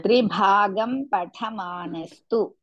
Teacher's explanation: त्रिभागं भा is महाप्राण, patha tha is महाप्राण.